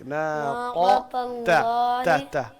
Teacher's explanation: یعنی قاف موٹا ہے اور تا باریک. ناقة تا الله دوبارہ ناقة.